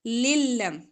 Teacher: دو زیر کو لام کے ساتھ ملا کر ادغام کریں گے گننے کے بغیر. ٹھیک ہے، جب گننے کے بغیر کرنا ہو تو زیادہ ٹائم نہیں لگاتے ملاتے ہوئے، للم فوری پڑھ دیتے ہیں.